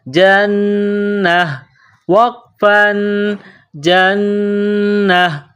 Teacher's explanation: قرآن پاک میں جب اس لفظ پر رکیں گے، وقف کریں گے، تو آخر والے حرف گول تا کو ہا سے تبدیل کریں گے